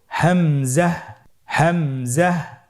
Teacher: হামজা হরফটি উচ্চারণ ক্ষেত্রে বারিক করে উচ্চারণ করতে হবে এবং এখানে টেনে পড়া যাবে না, দ্রুত পড়তে হবে।